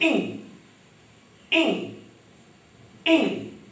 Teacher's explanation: ये ध्वनि वैसी ही है जैसे हम अंग्रेजी में इस ING का, इस जी का उच्चारण करते हैं। इंग, इंग, इंग। नाक से आ रही है। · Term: अनुनासिक